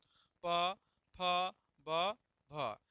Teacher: बोलिएगा तो दोनों होट आपका सटेगा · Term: प वर्ग